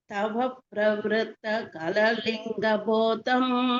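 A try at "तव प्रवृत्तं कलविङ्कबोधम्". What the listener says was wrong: कललिंग இல்ல, कलविंग போதம்.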